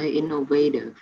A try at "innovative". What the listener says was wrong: Coi coi dấu nhấn đúng không nha. Con đọc là innovative thì dấu nhấn là ở âm thứ ba đúng không? Innovative. Nhưng mà ở đây phiên âm con có thấy không? Là dấu nhấn là ở âm thứ nhất.